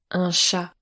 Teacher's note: L’accentuation est sur le A. Car c'est la dernière voyelle.